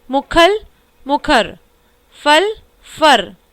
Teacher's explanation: अवधि में ल के स्थान पर र की प्रवृत्ति मिलती है, जैसे मुखल, मुखर, फल, फर आदि।